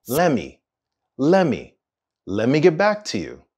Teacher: the two words let and me are actually combined